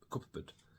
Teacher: So because the P and B are both pronounced by closing your mouth and putting your lips together, P, B, yeah, and you get a different sound, we don't pronounce them both. As we say cub, we close our mouths, and instead of pb, we just say b.